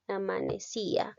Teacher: la vocal y lleva la mayor fuerza de voz